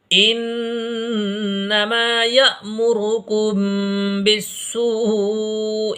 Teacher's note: یہاں پر جھٹکا لگے گا کیونکہ الف کے اوپر یہ ساکن آ گیا ہے، حمزہ ساکنہ میں جھٹکا لگتا ہے